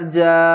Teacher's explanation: اس کو 3 سے 5 الف کی مقدار کھینچ کر پڑھیں گے۔ جیم الف مد زبر جا، حمزہ زبر آ، جا، نون کو سقاد سے ملائیں گے، سقاد کو موٹا پڑھیں گے۔ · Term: بڑی مد